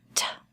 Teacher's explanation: So if you say the word start, if you put your hand in front of your mouth and say the word start, at the end you should have a little bit of air that comes out, t. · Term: voiceless sound